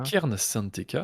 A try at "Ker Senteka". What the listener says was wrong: Non, Ker Senteka, pas de N. Ker. Comme le Ker, mais sans E.